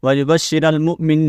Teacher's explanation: حمزہ کو جھٹکے کے ساتھ پڑھیں گے